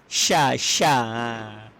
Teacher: Kerana dalam Al-Quran huruf yang paling banyak angin keluar adalah huruf ni. Huruf shin ni angin dia paling banyak keluar.